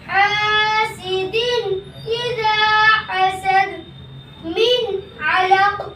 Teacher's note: اگر ان 6 حرفوں میں سے کوئی حرف تنوین یا نون ساکن کے بعد آ جائے تو تنوین والا حرف یا نون ساکن جلد پڑھا جائے گا، نہ کھینچے گا، نہ غنہ ہوگا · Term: اظہار علقی